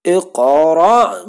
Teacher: Ada huruf qaf ya. Mati, sukun ya, dan qaf merupakan salah satu dari huruf qalqalah, maka bacanya dipantulkan. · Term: Qalqalah sugro